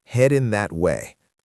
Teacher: The G at the end of heading is very soft. It is not a hard clicking sound. And the words that and way flow together. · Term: connected speech